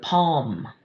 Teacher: lm at the end of a word palm we don't hear that l. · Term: silent letter combinations